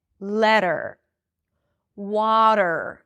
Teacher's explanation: it's a flap T and there is no vowel